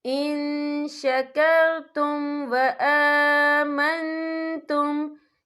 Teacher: نون ساکن کی آواز کو ناک میں چھپائیں گے